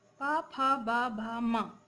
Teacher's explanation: पा वर्ग के वर्णों का उच्चारण स्थान है होठ। पा, फा, बा, भा, मा इन वर्णों के उच्चारण में मुख से निकलने वाली वायु होठ का स्पर्श करती हुई बाहर आती है।